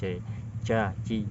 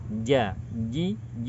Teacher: Karena kita tidak melafalkan huruf jim sesuai dengan makhrajnya. Makhrajnya adalah di bagian tengah lidah, bertemu dengan langit-langit. Sering sekali huruf C ini muncul karena kita tidak menggunakan bagian tengah lidah, akan tetapi kita menggunakan ujung lidah dipertemukan dengan langit-langit bagian tengah.